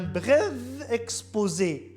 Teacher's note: Un bref exposé, le F, devient V.